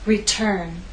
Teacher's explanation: return has two syllables but it's the second syllable that is stressed T is at the start